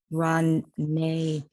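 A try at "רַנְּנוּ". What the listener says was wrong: Not nay. It's ran. Just the n. Ranenu.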